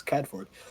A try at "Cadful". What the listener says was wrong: Cadful. Cadful. Yeah, there's L's at the end. I realize it's a little bit hard to hear. We might not feel the wind up here, but it does still rush.